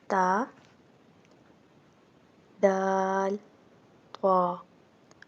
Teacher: زبان کی نوک اور اوپر کے دانتوں کی جڑ سے ادا ہوتے ہیں۔ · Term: حروف نطقیہ